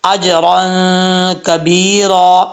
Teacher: جیم قلقلہ کے ساتھ پڑھا جائے گا کیونکہ حروف قلقلہ میں سے ساکن ہے، را کے اوپر 2 زبر را پر پڑھا جائے گا۔